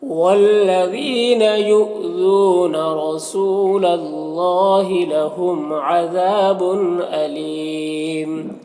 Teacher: یہاں پر اللہ کے لام سے پہلے لام کے اوپر زبر ہے تو اللہ کے لام کو پر پڑھیں گے، کھڑا زبر ہے، ایک الف کے برابر کھینچیں گے۔ یہاں پر میم میں اظہار شفوی ہو رہا ہے، جلد پڑھنا ہے۔ ذال میں الف مدہ ہے، ایک الف کے برابر کھینچیں گے۔